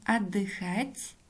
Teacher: о в начале слова безударная гласная поэтому произносим как а